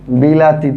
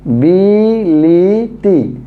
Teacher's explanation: পূর্বের ই আর পরের ই, এই দুই ই এর কারণে মাঝখানে ছিল এটাও ই হয়ে যাবে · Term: স্বরসঙ্গতি